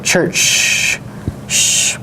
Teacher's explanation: And you can tell that because if you try to extend the affricate ch, you're going to be making this sound, the she sound